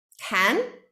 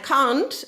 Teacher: can is generally a more open vowel can and can't is longer because it's a bit longer and it's more like um can't